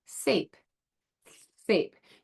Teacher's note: You're going to feel your tongue right up there on the alveolar ridge